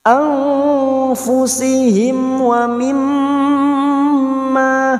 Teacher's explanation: mim yang bertasdid gunna musaddada kita dengungkan selama 3 harokat. Wa mimma la, ma fathah diikuti alif 2 harokat, lam alif 2 harokat.